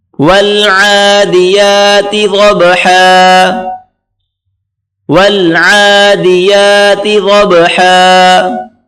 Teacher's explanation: عین کو گلے سے نکالیں زور لگا کر